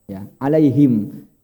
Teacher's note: ha itu kan tempatnya di bawah Pak, di tenggorokan bawah